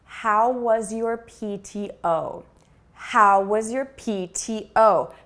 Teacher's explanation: so we're stressing the question word how and the key word which is pto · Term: phrase level stress